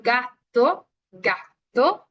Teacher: La lengua va tal cual la parte ahora sí posterior del velo paladar, ¿ok? Va más para atrás la lengua, por eso se escucha un poquito más, siento yo, a veces me dicen que es palatal por cómo se escucha, pero realmente no, se va más por la parte velar porque la lengua va más atrás.